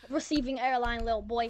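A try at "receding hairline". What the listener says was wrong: You can't even say receding hair. You're saying receive. you're saying receiving hairline, you dumbass.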